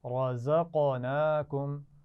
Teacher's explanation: را موٹی پڑھی جائے گی، زا میں سیٹی کی آواز ہوگی اور قاف پر قلقلہ ہے